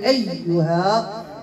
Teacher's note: كنعطي النبر في الياء فالياء مشدده دائما الياء ملي كتكون مشدده هو مشدده كنعطيهم النبر كنضغط عليها باش